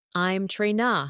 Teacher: Another example is the phrase I'm trying to. When spoken naturally, it becomes I'm train.